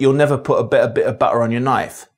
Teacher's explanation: T between vowels and at the ends of words is famously rendered as a glottle stop. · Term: glottal stop